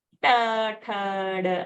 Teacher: All that varga has used the murdhani, cerebral aspect.